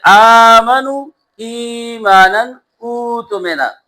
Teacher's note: دوسرا حمزہ ساکنہ کو ما قبل کے مطابق خالص حرف مد سے بدل دیا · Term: ابدال وجوبی